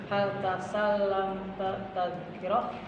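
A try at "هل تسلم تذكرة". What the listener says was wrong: Tak itu dibaca semua. Tasallam ada tasdid di situ. Tak itu. Tadkiratu. Ya, dibaca semua, jangan ditinggalin.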